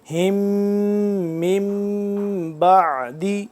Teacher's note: اس میم ساکن کے بعد با آ گیا تو یہاں پہ ہم اخفا کریں گے